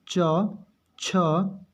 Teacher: तालु में देखिए च, छ, तालु को टच कर रही है जीभ